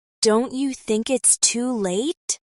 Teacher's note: Hear the way the words connect. Don't you becomes don'tcha.